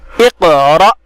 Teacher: ساکن ہونے کی وجہ سے حمزہ پہ جھٹکا ہوگا اور اس کو جھٹکے کے ساتھ ادا کریں گے.